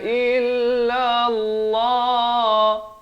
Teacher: Lafz jalalah dibaca tebal. Dua harakat.